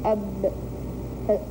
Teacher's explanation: فانقطع الصوت عند الشفتين فذلك مخرج الحرف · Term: مخرج الباء